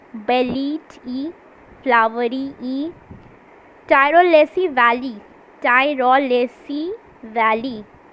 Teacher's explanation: So in the assonance we can find the repetition of the vowel sound E.